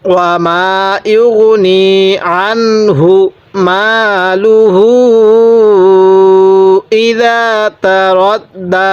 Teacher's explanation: দালটা নরম করে 1 আলিফ টান দিব